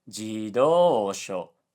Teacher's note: he said jidosho, low high low low, which sounds like jidosha, which means car.